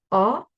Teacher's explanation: So in this word, AU says oh. It's a deep oh. You're going to drop your jaw just a little bit more.